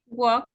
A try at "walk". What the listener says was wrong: You don't pronounce the L. The L is a silent letter. So just do not pronounce the L.